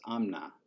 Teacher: when you have this like amta thing, so you have like an M followed by a T, the T becomes an N. So instead of amta, it becomes amna. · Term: Korean sound change